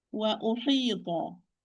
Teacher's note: Only the ta is heavy. All the rest are light.